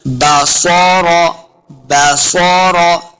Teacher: स्वाद हुरूफ मुस्तालिया से है, इसे मोटा पढ़ना है, रा को भी पुर पढ़ना है। बसरा, लम्बा बिल्कुल नहीं करेंगे।